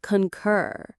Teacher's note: The stress is on the second part. Concur. It sounds a little bit like the purring sound a happy cat makes, but with a k sound at the start.